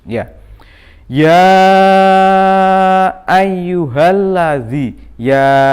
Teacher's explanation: Cara membacanya dibaca panjang 2 sampai 5 harokat atau ketukan. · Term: mad jaiz munfasil